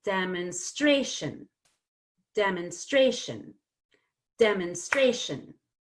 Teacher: I have to reduce it it has to become mun not monde · now every other syllable is important so what happens to de de gets secondary stress it's going to get some stress but not as much